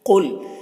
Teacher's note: قاف کو پر پڑھیں گے، حروف مستعلیہ میں سے ہے